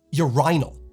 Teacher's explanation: In the UK, it's more common to hear urinal, with the accent on the second syllable with a long I.